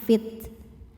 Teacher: ta harus ada sifat syiddahnya, harus ada sifat hamsnya. Jadi ada suara tertahan fit. Kemudian angin belakangan fit.